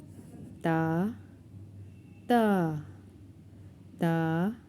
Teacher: Our tip of the tongue when touch the roof of the upper two teeth, then it will be the articulation point of Ta.